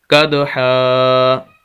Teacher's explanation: وقف کریں گے ایک زبر پڑھی جائے گی آخر سے اور الف پڑھا جائے گا